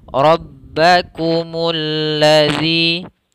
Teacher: tebalkan di ba, tebalkan di ra